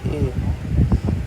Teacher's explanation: यह आपका ए कंठ तालव्य स्वर है